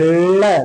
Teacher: जब आप ल बोलेंगे तो आपकी जीभ फोल्ड हो जाएगी आगे से, और जब जीभ फोल्ड हो जाएगी तो दोनों किनारों से वायु सुगमता पूर्वक आने जाने लगेगा, जगह खुल जाती है ना दोनों तरफ, तो दोनों तरफ से वायु सुगमता पूर्वक अंदर आने लगता है और बाहर जाने लगता है। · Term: पार्श्विक